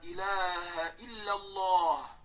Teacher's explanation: Bu yerda ham la ikki harakat. Ilaha ham ikki harakat. Alloh lafzi ham ikki harakatdan cho'zildi.